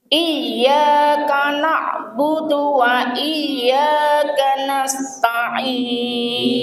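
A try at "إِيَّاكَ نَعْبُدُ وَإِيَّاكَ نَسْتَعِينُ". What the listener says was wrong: Iya, betul.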